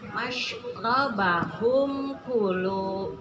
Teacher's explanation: Jadi di sini masyrobahum unasim masyrobahum ku, mim mati menghadapi kaf, bukan mim, bukan ba. Jadi idhar syafawi dibaca jelas.